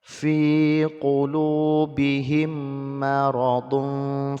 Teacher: mim sukun bertemu dengan min, hukumnya idgham mimi, jadi didengungkan 2 harokat